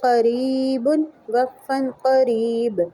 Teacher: تنوین وقف کی صورت میں ساکن پڑھی جاتی ہے